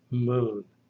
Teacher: this is the labial nasal, pronounced by putting the lips together and forcing the air through the nose, like M in the word moon.